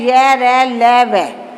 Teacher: अंतस्थ व्यंजन ऐसे व्यंजन जिनके उच्चारण में जीभ मुख के किसी भी भाग को पूरी तरह स्पर्श नहीं करती, उन्हें अंतस्थ व्यंजन कहते हैं। ये स्वर तथा व्यंजन के बीच की स्थिति की हैं।